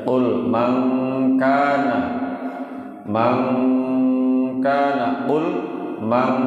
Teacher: Yang bacanya ang ada dua huruf, yaitu ketika non mati atau tanwin bertemu dengan kaf, atau non mati atau tanwin bertemu dengan huruf qaf. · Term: bacaan ikhfa